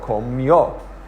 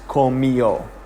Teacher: So in this case, the accent mark is overriding not only the second to last vowel, syllable, but it's also overriding the fact that the diphthong is a diphthong. It's changing the diphthong from yo to eo, which is 2 syllables.